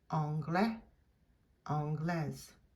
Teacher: Because of that final E, we are going to pronounce that S, and it's going to be a Z sound.